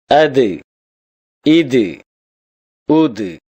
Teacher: தால் நாவின் நுனி மேல் வரிசை நடுப்பற்களின் ஈரை தொடும்போது ஒலிக்கப் பெறுகின்றது.